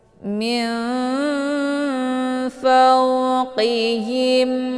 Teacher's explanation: hukum bacaan ikhfa Aad dibacanya sambil didengungkan · ar nun sukun bertemu dengan huruf Fa dinamakan dengan Ikhfa Shad cara bacanya nunnya disamarkan kemudian siap-siap menuju ke huruf Fa